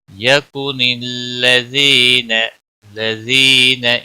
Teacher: لم میم کے اوپر اظہار ہوگا، یکن الذین، لذین یا مدہ ہے، ایک الف کے برابر کھینچ کر پڑھیں گے